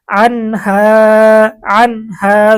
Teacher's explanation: এখানে নুন সাকিনের পরে ইজহারের হরফ হা এসেছে, গুন্না ছাড়া স্পষ্ট করে পড়তে হবে।